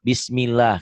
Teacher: Lafaz Allah dibaca tarkik, tipis, berbunyi Allah.